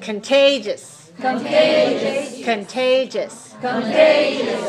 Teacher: So that's 3 syllables, and it's stressed on the second.